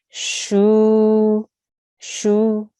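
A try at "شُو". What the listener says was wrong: Make sure again, it's not shu. You don't want to jerk at the end. You just want to keep it very soft. So it's just shu.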